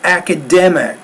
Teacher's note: the stressed syllable is dem. It's the second to the last syllable, academic, and you want to make that stressed syllable clearer, louder, longer, and even higher pitched.